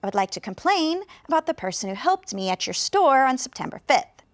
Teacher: the person listening to you can hear complain helped store Fifth and those were the most important words to hear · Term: strongly stressed words